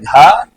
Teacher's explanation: इसी प्रकार जो चौथा कॉलम है घा, तो उसमें हमारे शिक्षा शास्त्री कहते हैं कि उसमें दोनों लगता है, महाप्राण भी लगता है और नाद भी लगता है या घोष भी लगता है। तो घा इज इक्वल टू का प्लस महाप्राण प्लस नाद या घोष